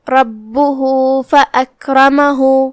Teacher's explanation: را پہ زبر ہے، لہذا را کا حکم ہے تفخیم، تو ہم اسے بھاری آواز میں پڑھیں گے. آخری میں یہاں بھی ہا پہ یہ علامہ ہے الٹا پیش، تو ہم یہاں بھی اپنی آواز 2 مد کے برابر کھینچیں گے کیونکہ یہاں بھی حکم ہے مد صلہ صغرا.